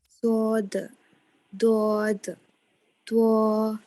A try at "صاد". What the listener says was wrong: پھر round lips ہو رہے ہیں آپ کے. ایسے ہونے چاہیے جیسے تا ہوتا ہے نا تا کی طرح. یہ تا ہے نا اسی طرح تو ہونا چاہیے. بس زبان موٹی ہوگی اٹھائیں گے آپ پیچھے سے.